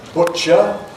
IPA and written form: ˈbʊʧə (butcher)